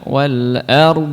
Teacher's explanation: ada tekanan huruf dhad yang masih berlangsung ketika bunyi harakat sudah habis harakatnya habis tapi penekanan di huruf Dod itu masih berlangsung sebentar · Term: istitolah